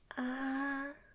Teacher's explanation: So, first tone is just a little bit high, okay?